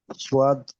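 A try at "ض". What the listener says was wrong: সদ নয়, দদ, দদ। সদের উপরে নক্ত হয় না, ঠিক আছে, ঠিক আছে, দদের উপরে নক্ত হয়, তাহলে এটা হলো দদ ইয়া।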